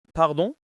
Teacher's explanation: The upward intonation makes it a question.